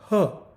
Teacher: ह्याचा उच्चार देखील कंठापासून, कंठ से होता है